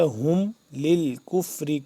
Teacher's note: ہا کو ہم نے ادا کرنا ہے سینے کے پاس سے اور حلق کے آخری حصے سے